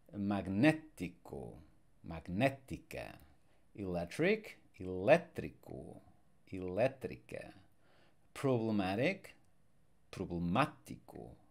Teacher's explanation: we have the stress where the accent mark is and the accent mark is on the third last syllable because otherwise by default we would stress the next last syllable